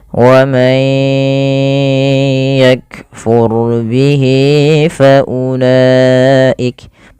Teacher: ro-nya tebal karena di sini ro sukun didahului dengan fathah